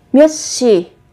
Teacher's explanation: Các bạn khi mà vị trí phát âm chờ, phụ âm chờ theo sau là phụ âm sờ, thì các bạn sẽ đọc gấp đôi phụ âm sờ lên